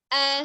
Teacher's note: a dengan a ya Secara makros kita sudah belajar huruf Ali huruf alif ini Dia berasal dari tenggorokan bagian bawah